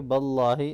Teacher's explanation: अल्लाह के नाम से पहले ज़बर आ रहा है इसलिए इसको मोटा पढ़ेंगे।